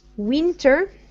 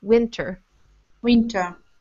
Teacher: in the first syllable, make your I shorter